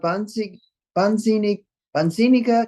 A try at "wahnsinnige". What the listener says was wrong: Wahnsinniger. You make the A longer because there's an H after it.